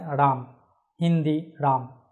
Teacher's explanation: অর্থাৎ ময়ের পর যে অকার সেটা উচ্চারিত হচ্ছে না।